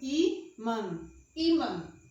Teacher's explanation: a sílaba tônica é I, e termina em an, an